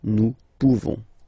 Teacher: You don't pronounce the final S.